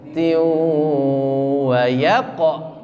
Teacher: Tiu tanwin ketemu dengan wawu ditahan karena dengung. Tiu masuk ke rongga hidung.